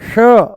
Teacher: जैसे ही हम बोलते हैं श जैसे ही बोलते हैं हम श मूर्धा ऊपर से बोला जाता है श। जीभ को थोड़ा सा ऊपर घुमा के तालू से लगा के बोला जाता है।